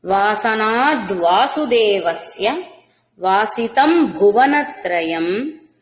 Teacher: వాసితం అనుస్వరం మకారమే ఉంటుంది